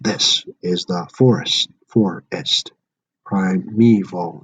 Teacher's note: And dactylic, stressed, unstressed, unstressed.